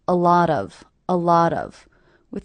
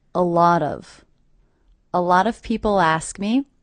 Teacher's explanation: I also notice that I hear these 3 words as one unit. A lot of, with the stress happening on the middle word.